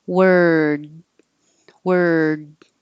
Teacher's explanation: And this one will the will stretch a little longer because the final sound is a D. The voiced sound at the end makes the vowel a tiny bit longer. But actually, when you're going from the R to the D, that takes time.